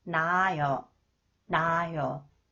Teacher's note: When the final consonants 히읗 is followed a vowel, 히읗 is not pronounced. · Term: elimination of 히읗 pronunciation